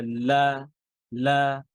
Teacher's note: যে হরফটা পড়ার সময় আমাদের মুখ খুলে যায়, ইনফিতাহ। হ্যাঁ, আওয়াজ জিহ্বা এবং তালুর মাঝখানে আওয়াজ আবদ্ধ থাকে না, আওয়াজ আটকে থাকে না